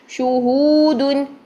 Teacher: شو اور ہو دونوں میں ہونٹ گول. شہودن، ہو کو لمبا کریں گے واو مدہ کی وجہ سے.